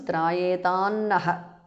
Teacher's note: Trayetam ends in Anuswara followed by Na. So it becomes Trayetan Naha because of sandhi.